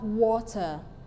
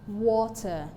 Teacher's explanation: the stress level is in wa while the unstressed level is ter water another example is danger ahead amend now these are examples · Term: stressed syllables